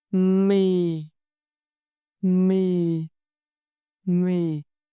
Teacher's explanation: When you pronounce this tone, you lower your voice. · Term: huyền